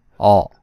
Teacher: everything remains the same except the shape of your lips your lips should be unrounded and not really protrude